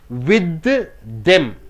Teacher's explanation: enough see with them it changes into with aim with them it ends with the th starts with the th only one th is enough